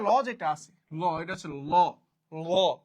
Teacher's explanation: ল উচ্চারণ করার সময় মুখের দুই পাশ দিয়ে হাওয়া বের হয়ে যায়, পাশ। তাহলে মানে লটা হচ্ছে পার্শ্বিক ব্যঞ্জন।